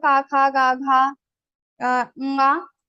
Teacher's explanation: These sounds will be pronounced from your kantha. So these are called gutturals. We use our throat to pronounce all these letters.